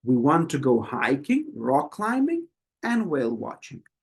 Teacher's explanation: The Voice goes up and up and then for the final one it goes down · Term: list of things